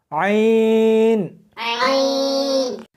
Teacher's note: اس کو حلق میں سے سختی کے ساتھ نکالنا ہے